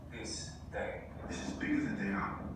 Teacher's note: those TH sounds in this. This is bigger than they are. They should be dentalized.